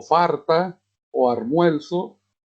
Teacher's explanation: cuando es R por L, se llama rotacismo